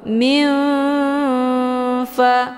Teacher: Makna ausat itu pertengahan antara makharijul huruf nun dengan fa, itu posisinya tidak begitu dekat juga tidak begitu jauh. Cara bacanya, nunnya disamarkan kemudian siap-siap menuju ke huruf fa. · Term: ikhfa ausat